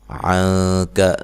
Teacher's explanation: نا الف مدہ ہے، الف مدہ واو مدہ یا مدہ کو ایک الف کے برابر لمبا کیا جاتا ہے۔ عَنْكَ، نون ساکن کا یہاں اخفا مع الغنہ ہے، کاف کو باریک پڑھنا ہے، لمبا نہیں کرنا۔